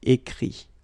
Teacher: Remember that phonetically this final T doesn't exist. Okay? So the sound will be only this I.